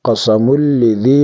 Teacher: یہاں ادغام ہوگا بغیر غنہ کے یعنی بلا غنہ ادغام ہوگا